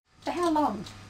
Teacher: this is a question too but it has a falling tone a falling tone is used with information questions there are questions